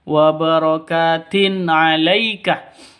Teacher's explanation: tanwin bertemu dengan ain jelas terang karena bacaan izhar izhar hurufnya enam izhar halq ini ya karena hukum bacaan nun tanwin atau nun atau nun mati bertemu dengan ain ya. · ka panjang dua ketukan karena ada alif diawali dengan fathah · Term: mad thabi'i